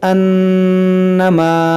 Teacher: यहाँ नून मुशद्दद है, इसमें गुन्ना करेंगे,